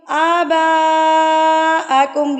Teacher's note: یہ ہے بڑی مد، مد متصل، جس کو آپ نے 4 حرکات کے برابر کھینچنا ہوتا ہے، اور اس کی پہچان اس حمزہ سے ہوگی۔